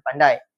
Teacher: di mana huruf ini bermula dengan bunyi daripada vokal vokal depan rendah iaitu huruf A dan mengelucur secara cepat ke arah posisi vokal yang lebih tinggi iaitu I dan membentuk satu humusan nafas. Bunyi huruf A yang lebih dominan dan bunyi huruf I bertindak sebagai luncuran menjadikannya sebagai bunyi a yang lebih dikategorikan sebagai bunyi discon di mana vokal tersebut a membentuk bunyi i yang berirama. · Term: diftong